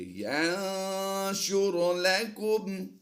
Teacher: نون ساکن کے بعد شین حروف اخفا سے ہے، اخفا کرتے ہوئے غنہ زمانی کی آواز دیں گے